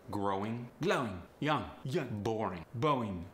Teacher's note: quite often the G is eliminated from the end of words